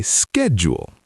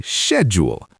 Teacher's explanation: Americans say SKED-jool, like schedule, but British people say SHED-yool